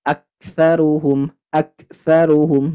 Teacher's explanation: ah lagi dengung yang lama lagi nah ada Kaf sukun Ingat tidak boleh terlalu pecah sifat hamasnya kalah oleh sifat syidah